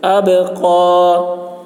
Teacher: قاف کی آواز موٹی ہوگی